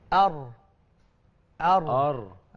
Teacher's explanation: Sebab ra ni bukan huruf syafatain. Kita bincang konsep dia kan. Dia bukan huruf bibir. Dia huruf lisan. Jadi di mana lidah kita letak tu menentukan ketebalan dia sebenarnya.